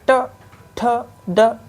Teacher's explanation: जीभ का अगला हिस्सा कहाँ टच हो रहा है, पीछे तालु के पिछले हिस्से में, कठोर तालु के पिछले हिस्से में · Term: मूर्धा